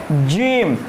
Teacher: तालू पे जब टच करते हैं तो उससे क्या होता है, वो जीम का साउंड निकालता है। क्या, जीम का साउंड रिलीज करता है।